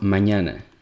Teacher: In Spanish, we have this sound, the letter ñ, which is a palatal nasal.